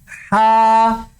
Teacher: جو حلق کا جو درمیان والا حصہ ہے جس کو وسط حلق بولتے ہیں, حلق کا درمیان والا حصہ, اس سے ہا ادا ہوتے ہیں